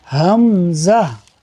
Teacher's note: حمزہ، یہ حمزہ جو ہے یہ بھی اسی طرح جہاں سے ہا ادا ہوتا ہے یہ بھی وہیں سے ادا ہوگا، یعنی حلق کے نیچے والے حصے سے سینے کی جانب سے